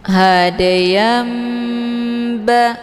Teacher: Dibalikkan daripada bunyi tanwin menjadi bunyi mim sukun. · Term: iqlab